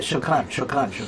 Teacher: It's just that little quick flip, but it's different than the American R.